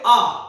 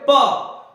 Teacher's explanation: आप बोलोगे आ तो सीधे बाहर निकल रही है, वही आप बोलोगे प तो जब आप बोलोगे तो आपके होठ टकरा जाएंगे। यहां से श्वास वायु आई लेकिन आपके होठ टकरा गए, जिसकी वजह से रुकी फिर बाहर गई।